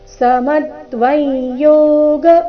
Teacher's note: ಅನುಸ್ವಾರದ ಉಚ್ಚಾರಣೆ ನಾಸಿಕ ಯ ರೀತಿ ಕಾರಣ ಮುಂದಿನ ಶಬ್ದ ಯೋಗ ಅವರ್ಗೀಯ ವ್ಯಂಜನ ಯ ದಿಂದ ಪ್ರಾರಂಭವಾದ ಕಾರಣ ಸಮತ್ವವೈ